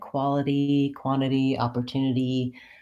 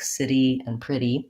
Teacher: it's also challenging to end on a tense E even though it has to be short and unstressed